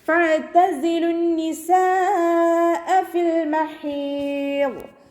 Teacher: മദ് വാജിബ് മുത്തസിൽ 4-5 കൗണ്ട് നിർബന്ധമായിട്ടും നീട്ടിക്കൊടുത്ത് പാരായണം ചെയ്യുക